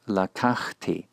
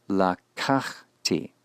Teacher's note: the accent will rest on the second from last syllable. We call this the penultimate syllable.